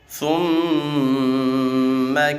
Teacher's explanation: ثم میم مشدد میں غنہ کریں گے